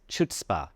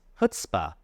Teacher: The emphasis is on the first syllable, Chutz.